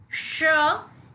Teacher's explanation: श जो होता है इसके अंदर आप देखिए बोलते हुए थोड़ा सा आपको प्रेशर, फोर्स जो है हवा की थोड़ी ज्यादा निकलती है मुंह से, और आपकी जीभ दांतों के ऊपर वाले हिस्से में हल्के से श लगती नहीं है पर उससे करीब चली जाती है। श इसमें दांतों के ऊपर के हिस्से में हल्की सी जीभ लगती है। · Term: तालव्य श